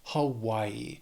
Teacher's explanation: It has 3 syllables, stresses on that second syllable, Hawaii.